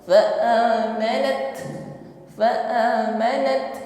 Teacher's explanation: Biasanya kalau kita mengucapkan ta Yang bersukun maka nampak sifat Hamas ya berhembus nafas